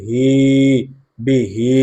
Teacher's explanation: হায়ের নিচে কারাজের আসার কারণে এক আলিফ টান হবে মাদ্দে তবাই